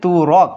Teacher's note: র এ যখন অকার আসলো একটি স্বরধ্বনি আগমন ঘটলো এটাকে আমরা বলছি বিপরকর্ষ।